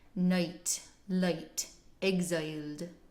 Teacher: you can still feel how the resonance shifts from ah to I. Ah, it's all up here, and then I, down in the chest.